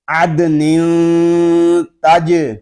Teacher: تنوین کے بعد حروف اخفا میں سے تا آ رہا ہے، ہم غنہ اس وقت کریں گے اخفا والا جب ہم تا کو پڑھ لیں گے